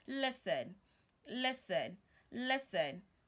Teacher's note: it is not correct for you to pronounce the T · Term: silent letter T